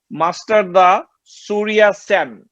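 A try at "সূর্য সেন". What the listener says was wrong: Surya Sen is pronounced like Shurjo Sen.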